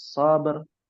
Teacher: Sabernya harus tafhim. Asrnya kalau dipisah juga harus tafhim. Ya, tidak boleh tarkik dibacanya karena beda-beda tipis tuh kelihatannya.